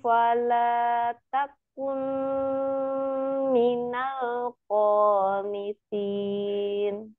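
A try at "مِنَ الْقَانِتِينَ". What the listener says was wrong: Minal qanitin. Agak diangkat pangkal lidahnya ya. Toknya tebal, kurang tebal. Minal qanitin.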